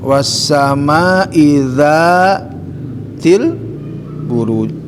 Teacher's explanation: Maka dza itu dibaca panjang 2 ketukan, masuk kepada mad tabi'i, kelompoknya kelompok mad asli ya.